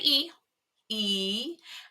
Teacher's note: with the e sound so if you say it right now when you say e the sides of your tongue push up against your upper teeth